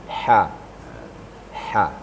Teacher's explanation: Di ha itu tempat keluarnya memang di tengah-tengah tenggorokan. Wastul halaq ya.